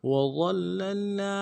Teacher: وظللنا میں واو کو نرم سے ادا کریں گے، ضال کو موٹا ادا کریں گے، ضا یہ موٹا حرف ہے، اور لام کے ساتھ ملانا ہے، لام کے اوپر تشدید زور دیں گے۔